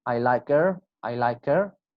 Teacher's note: Her will be pronounced as er.